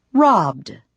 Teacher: Then there is D, as in robbed. When a verb ends in a voiced sound, you pronounce ED as D, robbed.